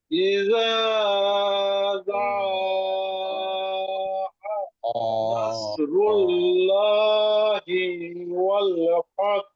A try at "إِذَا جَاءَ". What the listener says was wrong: জি প্রথমে ইদা, এটাতে তোমার টান বেশি হয়ে যায়। এটাতে এত টান একটু কম দিলে সমস্যা নাই, কিন্তু যাতে টান দিতে হবে।